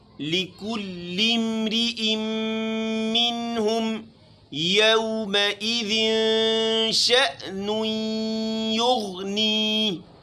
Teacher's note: اس پوری آیت میں غین کو موٹا پڑھیں گے باقی ٹوٹلی باریک ہے